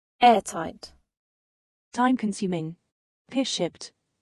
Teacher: For compound adjectives, these combinations have the primary stress on the first component.